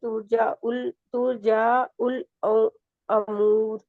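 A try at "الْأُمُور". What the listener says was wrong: अमूर होगा, जबर है कि पेश। तुरजाउल उमूर, उमूर उमूर, उमूर, ऊ को लंबा भी नहीं खींचते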